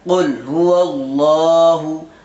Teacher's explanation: لام پور پڑھا جائے گا، کیونکہ لفظ اللہ سے پہلے زبر آ رہا ہے ، اس لیے یہاں لفظ اللہ کے لام کو پور کر